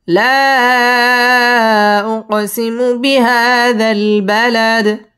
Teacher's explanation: দালের মধ্যে সাকিন করব, সাকিন করলে দালটা কলকলা করে পড়তে হবে এবং এখানে ওয়াকফ করতে হবে।